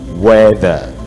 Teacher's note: It is not weather, it is weather, okay? Dental fricative, okay? Voice sound.